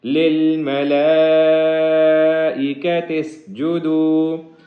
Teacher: لام کے اوپر بڑی مد ہے جس کی وجہ سے اس کو 3 سے 5 گنا لمبا کریں گے